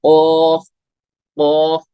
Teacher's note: कॉफ में जुबान की जड़ तालु के नरम हिस्से से लगी।